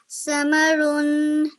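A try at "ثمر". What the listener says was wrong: Make sure this is a th sound. Okay, th. Thamarun.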